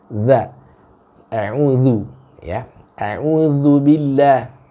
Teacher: huruf dha itu ujung lidah kita bertemu dengan ujung gigi seri yang atas